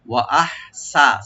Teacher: আহসানু, ওয়া ওপেন রাখবেন, আর হামজা আর হা রাইট দিয়ে পড়বেন, হাটাকে একটা আমরা হামজ করবো গলার মাঝখান থেকে